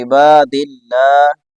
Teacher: با کے بعد الف ہے اس کو تھوڑا سا بڑا کرنا ہے